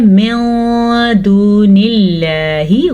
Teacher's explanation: من دون اللہ، غنہ بھی کرنا ہے ساتھ. اب دیکھیں اللہ کے نام سے پہلے زیر آ گئی ہے تو اللہ کا نام ہم نے باریک پڑھا